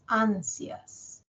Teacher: en ansias, cuando escuchamos la sílaba sias, la mayor fuerza de voz la tiene A. No es ansías, es ansias.